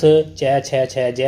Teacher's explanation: च छ ज और झ जो वर्ण वो तालव्य होते हैं